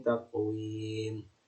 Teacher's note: Qaf ini juga huruf qalqalah yang harus dipantulkan